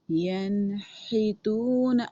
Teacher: اب ہا حلق سے نکلے گا، حلق کے بالکل درمیان سے۔ ینحتون، اب کسی نے ینحتون نہیں کرنا، ین کریں گے تو اٹس مین آپ نون کو ہلا کے پڑھ رہے ہیں، نون پر قلقلہ کر رہے ہیں، اور نون پر قلقلہ بالکل نہیں کرنا۔